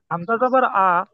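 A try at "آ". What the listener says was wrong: ওইটা শুধু টান দিয়ে দেন। হামজা আলিফ জবর টান দেন। আ, টান দেবেন শুধু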